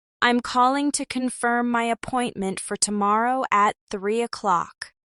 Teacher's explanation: Notice how calling to becomes callin' to and 3 o'clock flows together.